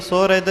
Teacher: ਇਹਨੂੰ ਸੁਰਿਦ ਕਸ ਕੇ ਨਹੀਂ ਬੋਲਣਾ ਪੋਲਾ ਉਚਾਰਨ ਕਰਨਾ ਸੁਹਿਰਦ ਯਾਨੀ ਅਰਥ ਪਿਆਰੇ ਦਾ ਵਾਚਕ ਹੈ ਸੁਰਿਦ ਬੋਲਣਾ >> ਭਾਈ